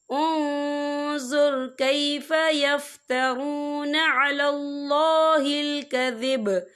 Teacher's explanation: یا دیکھیں انظر، یا نون ساکن ہے، نون ساکن کے بعد جو ہے وا آ رہا ہے، اور وا جو ہے اکفا کا ورڈ ہے، تو ہم یہاں اکفا کریں گے، نون ساکن کی آواز کو ناک میں چھپائیں گے